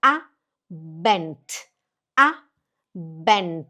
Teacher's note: A bent e o d tem som de t. · A palavra abent, a sílaba forte fica no a. Aí fica aí desce bent.